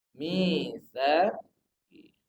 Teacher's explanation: Huruf sa, ujung lidah bertemu dengan ujung gigi seri atas.